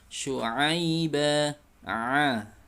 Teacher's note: bukan sekedar a, tapi a di tengah tenggorokan, a, ya, jangan sampai di bawah. · Huruf ain makhrajnya dari tenggorokan bagian tengah seperti suara A, tapi lebih ditekan, ya. Dan tekannya di makhrajnya, yaitu di tengah tenggorokan.